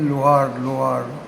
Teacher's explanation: ये ओ भी नहीं है और उ भी नहीं है